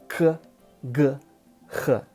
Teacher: the first three are pronounced in the same part of your mouth, like at the back of your throat